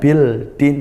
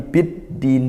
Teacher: Yukadzibu biddin, biddin di sini ada al, dalam ta'rif bertemu dal, maka hukumnya idgham syamsiyah, bukan bil din tapi biddin, dibaca idgham, dibaca masuk idgham syamsiyah, karena dal hurufnya di makhraj di lidah sehingga dekat dengan lam